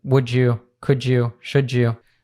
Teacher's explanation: we have a D plus a Y and it becomes a J sound